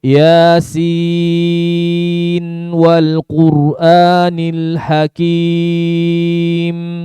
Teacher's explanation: Ketika masuk nun yang sukun, gunanya satu harokat. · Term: izhar riwayah